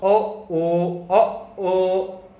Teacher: कंठ से भी आवाज आ रही है और आपके होंठ का भी सहारा लेना पड़ रहा है। तो इसको बोला जाता है कंठोष्ठ स्वर।